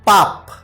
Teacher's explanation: বলার কারণটা কি দুই ঠোঁট মানে শুধু ঠোঁট বলে ক্ষান্ত হয়নি দুইটা ঠোঁটের কথাই বলেছে মানে দুই ঠোঁটই লাগবে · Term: দ্বিষ্ঠ